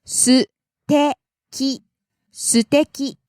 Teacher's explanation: Start low and goes up a te and stays high.